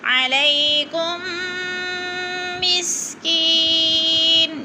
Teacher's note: مسکی پہ یا مدہ ہے، تھوڑا سا کھینچنا ہے ہم نے، اور نون دو پیش نون کو وقف کی صورت میں ساکن کر دیں گے۔